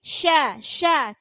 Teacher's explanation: Wa idzal isya, sya, tetap tebal tapi tidak pakai mencucu.